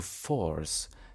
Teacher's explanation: Force merges with north to force, as is the case in GenAm.